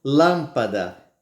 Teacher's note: Do mesmo jeito, lâmpada, não é mesmo? Ela começa bem forte e termina com menos intensidade.